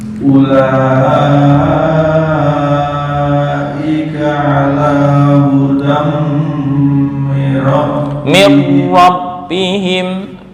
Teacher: Dengung hudam mir rabbihim. Tanwin bertemu mim idgham bi gunnah, ditahan 2 sampai 3 ketukan.